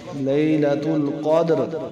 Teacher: دال حروف قلقلہ سے قلقلہ ہوگا